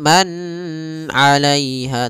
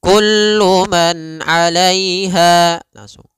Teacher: Pada lafal kullu man di sini ada izhar halqi, yaitu suara nunnya dibaca dengan jelas ketika bertemu dengan huruf ain. Maka kita namakan dengan bacaan izhar, ya, izhar halqi.